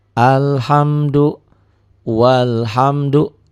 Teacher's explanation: seperti ini nih jadi Wal walhamdu alifnya enggak dibaca ya nih alhamdu walhamdu alifnya dianggap tidak ada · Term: Hamzah wasal